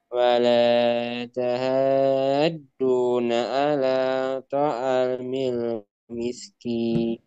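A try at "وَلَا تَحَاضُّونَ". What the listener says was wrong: Ini huruf dhad, bukan huruf dal. Jadi beda antara huruf dhad dengan huruf dal. Wala tahaddu itu huruf dal.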